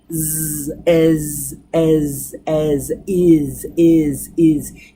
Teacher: there is a vibration or a humming sound that's in the throat. Z, as, is. You can feel it in there.